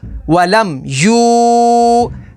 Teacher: اور واو ساکن سے پہلے پیش ہے تو واو مدہ ہوگی۔ لام دال زبر لد، ولم یولد۔